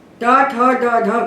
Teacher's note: ट ठ ड ढ का उच्चारण स्थान मुर्दा है